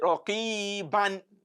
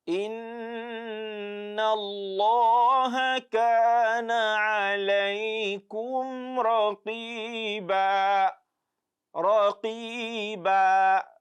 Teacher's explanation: So the length of the elongation is just 2. It will be like a primary elongation.